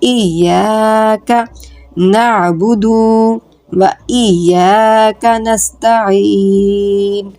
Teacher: الف مدہ ہے، اس کو 1 سے 2 الف کی مقدار کھینچ کے پڑھیں گے